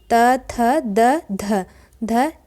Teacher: त वर्ग का उच्चारण स्थान दंत होता है।